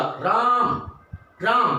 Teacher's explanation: हम राम की बात करें, राम, राम नहीं होता, राम, राम, तो राम में क्या है, राम में आ का उच्चारण 3 गुना बढ़ जाएगा। तो उसके अंदर जो बीच में जो ये 3 है, 3 ही इकाई है, वो 3 गुना उच्चारण का आपको आदेश देता है कि आप इस राम का आ के उच्चारण को 3 गुना आगे खिंचाव करके पुकारेंगे। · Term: प्लुत स्वर